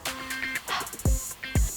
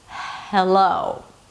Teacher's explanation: you push air out through the vocal cords. And the friction of the air passing between the vocal chords is the H sound. It's the same sound you make when you want to warm your hand on a cold winter day.